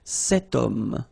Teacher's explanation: H is not pronounced, okay? So you've got the sound of O at the beginning of this word